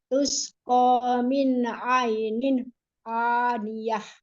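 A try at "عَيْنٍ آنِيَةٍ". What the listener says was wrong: Cuman sekarang waktu pas baca ainin, pas nin ketemu a-nya, tidak boleh putus. Nggak boleh ainin aniyah. Itu nggak boleh. Disambung. Ainin aniyah.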